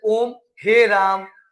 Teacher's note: ओम हे राम ये सब के सब ये सभी स्वर में ही आते हैं। ये सब प्लुत स्वर कहलाते हैं। क्या कहलाते हैं? प्लुत स्वर। इन सब में ज्यादा समय लगता है।